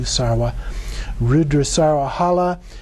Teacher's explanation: in Sanskrit it would be Sarva with a V, but the Tibetans pronounce it with the W, Sarva. Rudra Sarva Hala, that's the flesh and blood of the liberated Rudras of dualistic grasping.